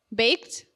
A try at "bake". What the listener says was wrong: we said baked with a D. There's no D.